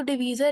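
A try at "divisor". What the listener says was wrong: डिवीजर नहीं, डिवाइजर,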